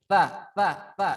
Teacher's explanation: Jadi ujung lidah kita bertemu dengan gigi geraham kita yang bagian atas.